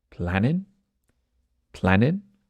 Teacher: we've got a case where the G on planning disappears